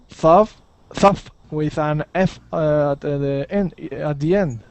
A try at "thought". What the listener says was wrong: Nope, we're going to pronounce that T. Thought.